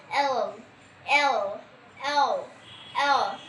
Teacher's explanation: জিহ্বাটা আমরা উপর পাটির দাঁতের মাড়ির সাথে লাগাবো।